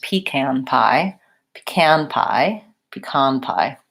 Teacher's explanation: I maybe might hear also sometimes pecan with first syllable stress